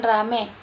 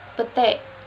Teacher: perubahan ini terjadi pada bunyi vokal rangkap ai ke vokal tunggal eh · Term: monoftongisasi